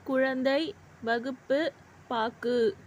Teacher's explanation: சொல்லின் இறுதியில் வரும்பொழுது ஒரு மாத்திரைக்கு பதிலாக அரை மாத்திரை அளவே ஒலிக்கிறது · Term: குற்றியல் உகரம்